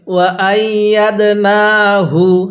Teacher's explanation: এই দালের মধ্যে ধাক্কা দিয়ে পড়ব, কারণ দালটা কলকলার হরফ